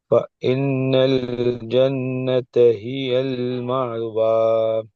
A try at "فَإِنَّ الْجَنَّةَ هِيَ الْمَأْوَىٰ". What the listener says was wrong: மஉ வரக்கூடாது. மஉ மஉ மஅவ. உண்மையில மஉ அல்ல. அலிஃப் தானே வந்துக்குது. அப்ப மஉ என்ற சவுண்ட் வரும். அதுல அந்த மஉ என்று சொல்லி வந்து நீட்டி உச்சரிக்கிற நேரத்தில் அது கலக்கி ஓதுறது, அழுத்தம் கொடுத்து ஓதுறதாக பேத்திரும். எனவே நாங்க அந்த பகுதியை இல்லாமல் ஆக்கிட்டு ம வ.